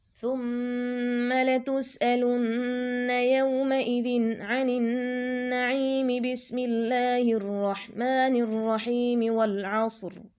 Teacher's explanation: پہلی صورت کے آخر بسملہ اور دوسری صورت کے ابتدا کو ملا کر تینوں کو ایک سانس میں پڑھنا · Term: وصل کل